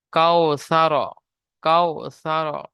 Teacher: ওয়াও লিনকে নরম আওয়াজে তাড়াতাড়ি পড়তে হবে, টান দেওয়া নিষেধ।